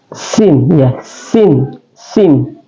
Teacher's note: Sin itu adalah dia keluar dari tarful lisan atau ujung lidah kita.